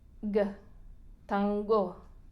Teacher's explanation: la N con la colita que viene justo antes de una G, es influenciada por el sonido de la G. G, tango.